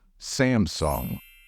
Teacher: the stress in this word should fall on the first syllable